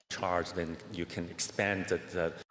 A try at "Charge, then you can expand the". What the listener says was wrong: He could lean off of the P a little bit and expand, right? It's a little bit perfect, just taking away from that vowel sound. That's one of the common mistakes that non-native speakers try to do when they're trying to create pitch. Their body tells them to create pitch by creating more force with the consonants, and that's what he just did.